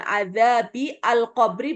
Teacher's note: alif lam qamariah karena lamnya ada sukunnya dibaca jelas